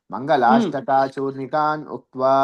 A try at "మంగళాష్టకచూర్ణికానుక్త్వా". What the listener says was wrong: మంగళాష్టక దీర్ఘం లేదండి. మంగళాష్టక చూర్ణికానుక్త్వా.